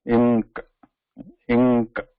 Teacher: we are not taking that tongue tip to the root of the upper teeth. We are not pronouncing N.